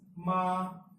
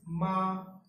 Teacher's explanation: The first tone is the flat tone.